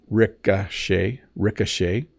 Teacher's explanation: the O has more of an AA sound Ricochet and then the CH is making a sh sound